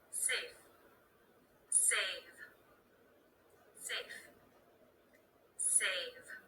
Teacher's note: the second word is just a little bit longer that's because of the voice consonant at the end